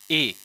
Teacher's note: इसलिए इन दोनों का उच्चारण स्थान संयुक्त रूप में होता है, क्योंकि आ और ई से मिला है तो आ कंठ और ई तालु, इसलिए इनका उच्चारण स्थान क्या होता है, कंठ तालु, कंठ तालु होता है।